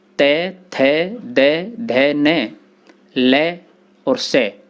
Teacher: इन वर्णों को दंत कहा जाता है। इनके उच्चारण में जिह्वा दांतों में लगती है।